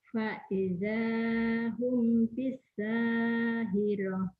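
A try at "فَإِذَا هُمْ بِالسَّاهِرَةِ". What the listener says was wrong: Faidahum bi, bukan pi ya Bu ya. Bi. Bi. Lagi. Faidahum bisahirah. Faidahum bisahirah.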